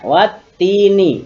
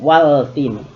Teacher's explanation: Kalau pada contoh watini, ini idgham syamsiyah seperti tadi, alif lam bertemu huruf yang bertasdid, maka dilebur al-nya ke huruf ta